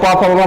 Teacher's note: प फ ब म का उच्चारण स्थान जो होगा वो ओष्ठय हो जाएगा